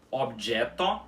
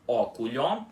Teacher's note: Objeto, que significa objeto, óculho, que significa óculos, e outro, ó, que significa outro. Tudo com o ó aberto em qualquer lugar da palavra